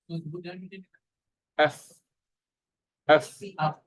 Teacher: Tapak perut, bibir sebelah bawah dan hujung gigi kapak sebelah atas. Af. Belah dalam. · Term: fa